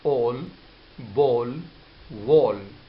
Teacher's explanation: So instead of saying a, that is American sound, we use the British sound, that is O. So we make a round shape of our lips and we produce the sound O here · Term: rounding of sounds